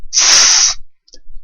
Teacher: I'm obstructing the air so that it makes a sound but I'm not actually stopping it so that it continues flowing over my tongue